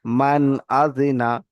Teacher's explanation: নুন সাকিনের আওয়াজকে বিনা গুন্নায় জাহির করে তাড়াতাড়ি পড়তে হবে